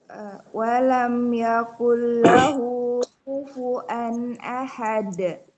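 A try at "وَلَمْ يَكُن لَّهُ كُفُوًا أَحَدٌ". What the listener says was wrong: Masya Allah, bagus Ibu.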